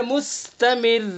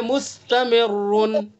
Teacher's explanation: अगर वफ नहीं करेंगे तो रा के ऊपर पेश होगा, तो इसलिए इस रा को पुर पढ़ेंगे, मुस्तमिरुन।